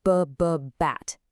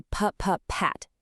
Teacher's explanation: It's just a puff of air. That tiny buzz is what linguists call voicing, and it's literally the only difference between a B and a P.